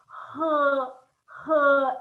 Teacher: And then the H is h, h. It's very glottal. It's pronounced down here, the throat.